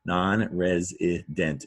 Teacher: Non-resident is a 4-syllable word. Stress on the res. Now notice res sounds like res, but it's an S.